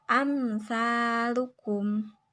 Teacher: huruf hijaiyah selain hurufba dan Mim cara membaca izhar syafawi yaitu bunyi mim disuarakan dengan terang dan jelas tanpa berdengung di bibir dengan mulut tertutup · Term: idhar syafawi